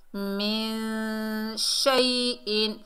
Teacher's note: نون ساکن میں اخفا حقیقی ہوگا، میم کو نون سے ملائیں گے، باریک اخفا بھی ہوگا کیونکہ شین باریک حرف ہے